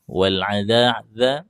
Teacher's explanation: ujung lidah ada di ujung gigi seri atas